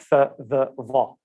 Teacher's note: sounds where you pronounce the sound with your tongue between your teeth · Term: interdentals